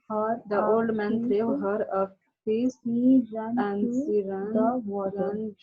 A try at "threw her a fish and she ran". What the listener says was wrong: Take care of your sh sound.